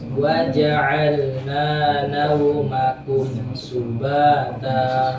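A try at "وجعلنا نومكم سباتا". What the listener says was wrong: Perhatikan naumakum. Wow, nauma. Kalau nau itu lazim Indonesia. Nauma, karena di sini rohanya harus keluar di sini, di ujung sini. Nauma, nah gitu. Tapi nggak memanjang gini ya. Ini hanya memperdengarkan suara waw sukun tuh gitu. Lin itu begitu.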